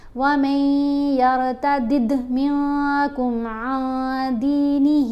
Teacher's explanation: یہاں پر دیکھیں یا ہے تو نون کی آواز ختم ہو جائے گی، میم کو ہم نے یا سے ملانا ہے۔ وَمَن يَرْتَدِّدْ، یہاں دال کے اوپر کلکلا بھی ہے۔